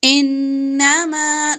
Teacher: میم زبر الف ما الف مدہ لمبا کریں گے